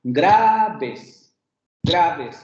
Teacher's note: cuando nosotros lo pronunciamos, el acento tónico recae en la A. · sílaba átona, va a ser la segunda sílaba, porque la fuerza tónica no recae en esa segunda sílaba, sino en la primera